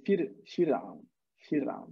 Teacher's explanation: we don't pronounce the ra of Fir'aun with tafkhim. We pronounce it with tarqiq, so we make it smaller, the ra.